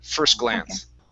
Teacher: So we can't say at first glance. So we can't stop on that S and say first glance. It has to roll right into it.